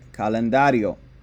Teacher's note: a vowel s or n yes o is a vowel so we put the emphasis on the second to last syllable to make calendario